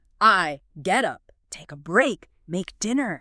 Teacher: you feel that pulse on the verb. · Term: stress